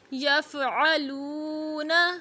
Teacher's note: لام پیش واو ساکن لو حروف مدہ ہے، ایک الف کی مقدار تک لمبا ہوگا